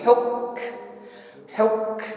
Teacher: Hukmu, jangan hukmullah tetapi huk. Tampakkan hamasnya, hembuskan nafas ketika menekan pada huruf kaf.